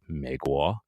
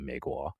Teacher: when you want to do the third tone into the second tone, you don't even start high. You start low.